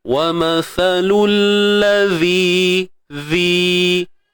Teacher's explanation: Huruf zal keluarkan hujung lidah, sama juga macam huruf sa ni tadi.